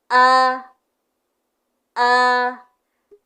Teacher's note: untuk makhrajnya berada di tenggorokan bagian bawah. Kalau laki-laki di jakun, kalau perempuan bisa dicek dengan menelan. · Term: huruf hamzah